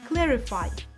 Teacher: It's a clear soft R followed by a distinct e sound.